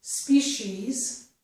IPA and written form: spiʃiz (species)